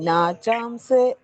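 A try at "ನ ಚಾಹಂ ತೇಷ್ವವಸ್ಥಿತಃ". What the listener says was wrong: ತೇಶ್ವ ಇಷ್ಟ ಅಲ್ಲ ಮಾತಾಜಿ ಶಕೆ ವತ್ತಿದೆ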